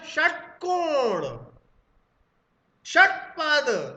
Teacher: और जैसे श बोला आपने, श, षट, तो जीभ एकदम झटके से पलटी और सॉफ्ट पैलेट पर लगी, मूर्धा पर लगी, तो ये मूर्धन्य शाह होता है दोस्तों।